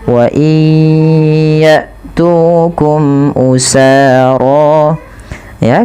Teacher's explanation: Kemudian wa tukum usara tufaduhum, wa iya, masukkan bunyi nun kepada huruf ya karena dia ada idgham bi gunnah, yaitu terjadi ketika ada nun sukun bertemu dengan huruf ya, maka masukkan nunnya kepada huruf ya dan ditahan